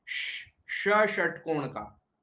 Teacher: श बोलते समय आपकी जीभ को पीछे खींच लो